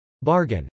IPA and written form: bˈɑrgən (bargain)